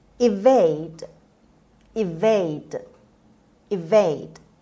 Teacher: Evade on the second syllable. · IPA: /ɪˈveɪd/